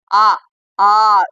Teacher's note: வாய் திறத்தலாகிய முயற்சியால் பிறப்பது வாய் அப்படி திறந்து சொல்ற எழுத்துக்கள் என்ன ஆ இதெல்லாமே பாத்தீங்கன்னா நீங்க வந்து